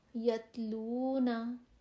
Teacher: نرمی سے، باریکی سے، بغیر جھٹکے کے، باریک آواز کے ساتھ اس کو ت آرام سے بول دیں گے. تا بولتے ہوئے وہ تتلی والی نازکی یا ذہن میں لے آئیں.